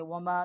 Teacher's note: میم الف ما، یہ چھوٹی مد ہے، 3 الف جتنا اس کی آواز جو ہے وہ اٹھا کر پڑھی ہے، بلند کی ہے آواز کو۔